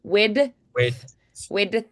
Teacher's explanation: so it's like the D flick into the TH